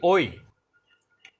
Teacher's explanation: এই ওই উচ্চারণ করতে গেলে আগে আমরা উচ্চারণ করি অ, পরে আমরা উচ্চারণ করি ই, হয়ে যায় ওই। এই অটা হলো কণ্ঠধ্বনি, ইটা হলো তালব্য ধ্বনি। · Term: কণ্ঠ তালব্য ধ্বনি